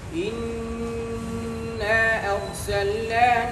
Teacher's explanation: قرات ابن کثیر ان کے دونوں راویوں کے نزدیک مد منفصل میں قصر ہے، یعنی ایک الف مد کرنا ہے · انہوں نے انا ارسلنا میں مد منفصل میں قصر کیا